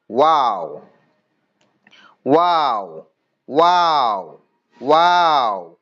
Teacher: 14 নম্বর মাখরাজ দুই ঠোঁট না মিলিয়ে মাঝখান থেকে উচ্চারিত হয় ওয়াও।